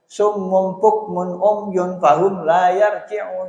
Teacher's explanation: Nah, enggak ada yang dengung, enggak dibaca jelas semua.